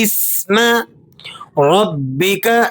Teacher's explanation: با مشدد ہے تو مشدد حرف کو سختی کے ساتھ پڑھا جاتا ہے